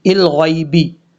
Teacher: غائن کے بعد جو یا ہے اس کو لمبا نہیں کرنا